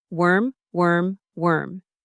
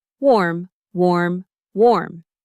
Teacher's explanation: The e in worm is more neutral and central in your mouth. The o in warm is rounder